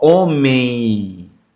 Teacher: esse M ele vem com som de i · o som de vogal E é nasalizado, o som da semivogal I que fecha o ditongo nasal.